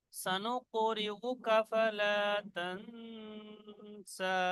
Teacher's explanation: এখানে সা বলে ছেড়ে দিলে একালিফ টান হবে। আর যদি ধরে নিয়ে আগে পড়েন তো এখানে মধ্যে মুনফাসিল হয়ে টান হয়ে যাবে।